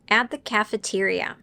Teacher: I didn't say the T sound at the end